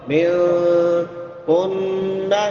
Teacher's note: منکن، یہاں پہ غنہ ہوگا کیونکہ نون مشدد ہے، شاد والے نون پہ غنہ ہوتا ہے۔